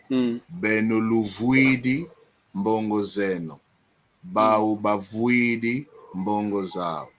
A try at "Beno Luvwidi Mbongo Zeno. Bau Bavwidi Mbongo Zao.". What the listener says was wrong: Tutondele, muito bom.